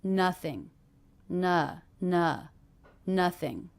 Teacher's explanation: ing endings even though this isn't an ing verb will be unstressed